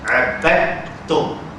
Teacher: Kalaulah masuknya sempurna, contohnya abadtum, dal masuk dalam ta. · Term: idgham